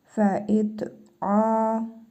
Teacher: Ayn hərfində hərfi məd var. Bir əlif miqdarı uzadırıq.